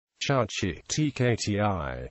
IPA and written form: ˈtʃʊktʃiː (Chukchi)